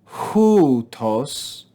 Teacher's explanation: So we're going to go up and down on this first syllable with rough breathing.